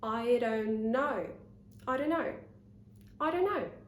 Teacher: I don't, I don't, I don't. And then I'm linking the N in don't with the N in no